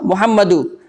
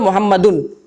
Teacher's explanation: उसका उच्चारण जो है लास्ट में नून सुकून की तरह करना है आपको